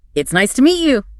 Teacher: It explicitly points out that the voice goes up slightly at the word nice and then falls gently at the word you. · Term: rise and fall of tone